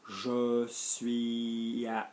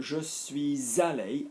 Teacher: I know to drop in the, you know, the S there, the liaison, because I'm avoiding the hiatus.